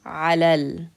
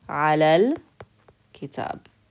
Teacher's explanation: We're going to connect the a sound to the lam.